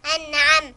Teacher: نون ساكنة مظهرة قبل العين مفتوحة. أنعى نون ساكنة مظهرة.